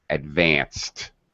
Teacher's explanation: we pronounce the ed as a t, not an extra syllable.